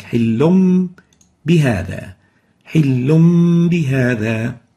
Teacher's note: حِلٌّ بِهَذَا, lam with tanween with dam, followed by a ba with kasra. We exchange the noon of tanween with a meme, and it will sound like حِلٌّ instead of حِلٌّ. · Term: iqlab